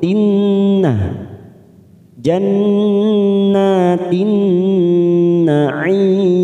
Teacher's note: Jannah masuk kata huruf nun yang bertasdid bacaan gunnah kita tekan 3 ketuk. Jannatin nanya fathah berdiri 2 harokat.